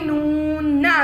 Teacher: نون ہونٹوں کو گول کرنے سے اور ناک میں آواز کو روکنے سے ادا ہوتا ہے۔